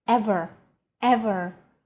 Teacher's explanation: ever is emphasized and the last e is almost nothing